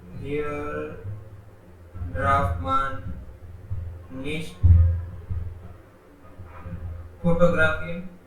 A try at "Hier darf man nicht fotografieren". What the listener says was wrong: यस, लेकिन ड्राफ्ट नहीं बोलेंगे, डार्फ।